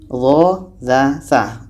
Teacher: Tempat keluar hurufnya pada ujung lidah, menempel dengan ujung gigi seri atas. Ujung lidah kita ini menempel dengan gigi seri atas.